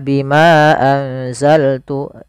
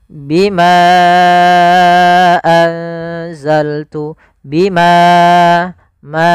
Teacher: Contoh di sini bima satu kata. Anzal satu kata, maka bimanya kita panjangkan sepanjang empat harakat. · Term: mad jaiz munfasil